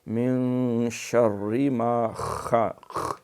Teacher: شین میں تفشی ہے، پھیلاؤ، من شر ما خلق، خا جو ہے اس میں خراٹا ہوتا ہے